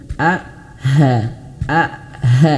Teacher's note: huruf hamzah dia memiliki ee makharijul huruf sama dengan huruf ha. Sama-sama di pangkal tenggorokan.